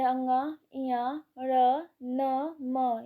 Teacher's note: इनका उच्चारण नासिका के साथ क्रमशः कंठ, तालु, मूर्धा, दांत तथा ओष्ठ के स्पर्श से होता है। अतः इन्हें नासिक्य व्यंजन कहते हैं।